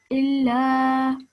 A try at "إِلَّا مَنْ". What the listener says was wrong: Yes, so do you see the difference? So this madda over here, so you have to elongate. Alif madda illa.